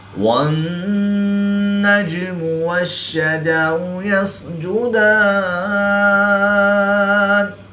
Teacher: جیم حروف قلقلہ میں سے ہے اور یہ ساکن ہے، اور یہاں پر ہم قلقلہ صغریٰ کر کے پڑھیں گے · نون مشدد میں ہمیشہ غنہ ہوتا ہے تو یہاں پر ہم غنہ آنی کر کے پڑھیں گے